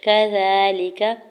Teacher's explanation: زال کے اوپر کھڑی زبر ہے دو حرکت کھینچ کے ادا کریں گے